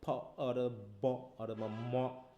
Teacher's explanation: for example the sound ফি, দেখো ফ, যেটা আমরা মানে বাইল্যাবিয়াল বলছি, বাতাসটা প্রথমে ঠোঁট দিয়ে আটকাই নিচ্ছি, দেওয়ার পরে একবারে ছাড়ছি